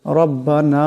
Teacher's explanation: এই নুনকে অল্প বেশি লম্বা করিয়া পড়তে হবে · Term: মদ